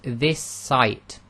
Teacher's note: clear this site and you'll notice that when you say it you hold the S slightly longer and you've effectively made it 1 s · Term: germination